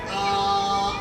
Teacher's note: तो कहते हैं कि ये जो बहालते मदद्दा यानी अलिफ जब मद्दा की हालत में होगा तो वो मुंह के खाली हिस्से से निकलेगा · الف جب مدہ کی حالت میں ہوگا تو وہ منہ کے خالی حصے سے نکلے گا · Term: अलिफ मद्दा, الف مدہ